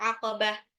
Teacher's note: Ini tak marbuthah di belakang menjadi ha.